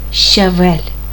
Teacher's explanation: Lego Нагадую що буква щ дає нам два твердих звука Отже у слові щавель буква ща дає нам твердий приголосний ш твердий приголосний ч голосний а твердий приголосний в голосний е М'який приголосний ль звертаємо